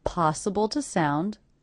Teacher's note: The word to is definitely reduced to the schwa, so I may mark that, so I don't forget to reduce it.